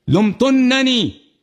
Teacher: تو ہم نے نون کو تشدید دیا, نون پہ غنہ بھی کرنا ہوتا ہے